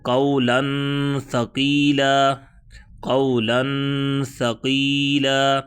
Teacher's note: قولا ثقیلا، قولا ثقیلا، قاف قاف زبر واو، قاف واو ساکن سے پہلے والے حرف پر زبر آ گئی ہے۔ اب تنوین کے بعد سا آ گیا، یہاں پر کیا ہوگا؟ اخفا